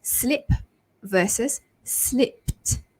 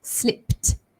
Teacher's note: The ed ending actually sounds like a t because of the p ending there, slipped. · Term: t ending